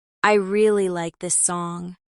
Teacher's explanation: I really like this song puts the stress on really to add feeling